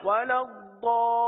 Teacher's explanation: مد لازم کا قاعدہ ہوگا، اور مد لازم کی مقدار آپ سن چکے ہیں کہ مد لازم کو 3 4 یا 5 الف تک کھینچ کر پڑھیں گے، تو ضال کو ہم نے کم و بیش 4 الف تک کھینچا ہے